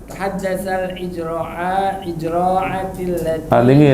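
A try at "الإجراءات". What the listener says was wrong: Itu alif apa ain? Jangan di ain ya kan di sengkai.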